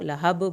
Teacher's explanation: बा का कलकला करें